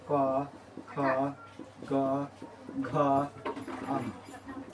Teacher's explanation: कंठ से तो कवर्ग बोला जाता है, मीन्स क ख घ कवर्ग बोला जाता है।